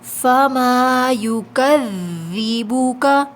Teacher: وال میں نرمی سے پڑھیں گے، سختی کی آواز نہیں آئے گی